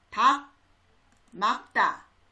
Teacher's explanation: 리을과 기역 중에는 기역이 소리가 나고